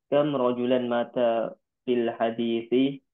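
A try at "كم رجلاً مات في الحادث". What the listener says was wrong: Panjang pendeknya harus benar. Panjang pendek itu sudah berpengaruh.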